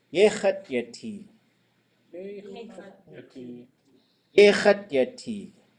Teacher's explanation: We also see there's only one high tone vowel. So we also look at those. We go high, low, low, low. We go long, short, short, long.